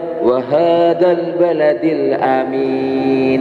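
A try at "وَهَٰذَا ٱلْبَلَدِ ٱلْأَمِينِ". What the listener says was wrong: Mohon maaf, wa hadza ujung lidahnya dikeluarkan sedikit. Wa hadzal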